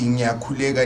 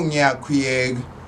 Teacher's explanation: It's always the L sound is turned into an NY sound